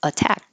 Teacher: This T can't change to a D, even though it's between two voiced sounds, because it's in the stressed syllable. So the rule that a T will change to a D if it's between two voiced sounds is only true if it's in the unstressed syllable.